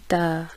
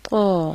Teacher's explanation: تا کے مقابلے میں قا کی آواز موٹی ہوتی ہے، ادائیگی کے لیے زبان جڑ سے اوپر کو اٹھا دی جاتی ہے، جیسے قا، اور تا میں زبان نیچے رہتی ہے، جیسے تا۔